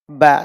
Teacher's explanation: ada suara yang mengalir ke rongga hidung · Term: ikhfa